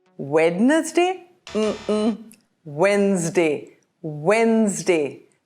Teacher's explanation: Notice the D in the middle is silent.